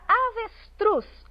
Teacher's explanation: na palavra avestruz última sílaba tônica mais uma vez oxítona